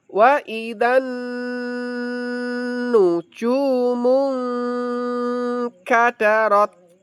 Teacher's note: nun sukun ketemu kaf di sini namanya ikhfa ya, Lur, ya. Jadi tertahan empat seperti gunah ini, Lur.